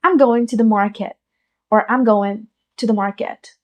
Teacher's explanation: वो हर एक जगह पे स्ट्रेस नहीं दे रहे हैं, हाफ वे कुछ वर्ड्स को अटर कर रहे हैं।